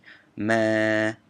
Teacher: When you have a long vowel, they're indicating that by putting this like arrow little hat on the A. That is an actual long vowel A, meaning ma, a whole like 2 count.